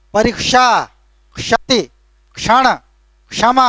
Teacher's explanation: उसका सही उच्चारण है क और श का मेल